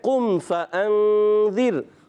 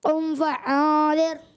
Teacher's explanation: حمزہ حلق کے نیچے والے حصے سے عین حلق کے درمیان والے حصے سے